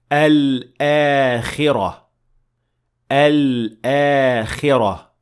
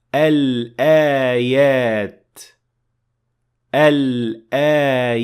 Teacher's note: This is actually the only combination in the Quran that combines three letters into one shape, and this is exactly how you should remember to pronounce it. You pronounce Lam, then Hamza, then an Alif with a natural mad of 2 counts. So there is a mad here.